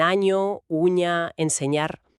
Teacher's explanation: con la parte media de la lengua contra el paladar duro, para la ñi, que es palatal. La ñi, claro.